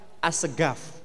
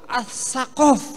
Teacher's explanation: Orang Yaman mengucapkan qaf dengan G.